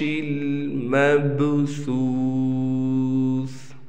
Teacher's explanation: یہاں پر خیال کرنا ہے کہ سا کا بہت ہی خیال کرنا ہے، یہ سا ہے، سین نہیں ہے۔ مبسوس نہیں پڑھنا بلکہ دونوں دانتوں کے درمیان ہلکی سی زبان لانی ہے